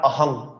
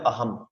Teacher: বাংলা উচ্চারণের ক্ষেত্রে এটা অহং, কিন্তু সংস্কৃত শ্লোক উচ্চারণ আমাদের বলতে হবে অহম। অহমও বলা যাবে না, ময়ের অর্ধেক, কারণ মর নিচে হসন্ত।